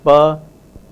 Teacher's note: the bilabial voiceless plosive pa